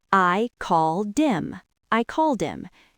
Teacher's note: in fast speech, we often drop the H in him · So him just sounds like him. >> We take the D from called and push it on to the I.